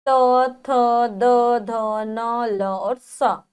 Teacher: दंत के द्वारा जो बोले जाते हैं